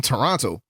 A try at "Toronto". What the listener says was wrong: Oh, you can't say all the all the letters. Yeah, it's Toronto.